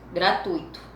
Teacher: Muitas pessoas tendem a pronunciá-la acentuando um possível hiato.